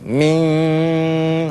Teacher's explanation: Mesti ada dengungan getaran di dalam hidung. Bukan di luar hidung, tak payah getar-getar macam ni.